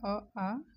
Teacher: इसको कंठ और जीभ का निचला हिस्सा द्वारा बोला जाता है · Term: कंठ स्वर